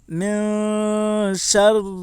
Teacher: اوپر زبر ہے، زبر کو جلدی پڑھیں تھوڑا بھی نہ کھینچیں، رائے مشددہ کے نیچے زیر ہے اس لیے رائے مشددہ باریک ہوگی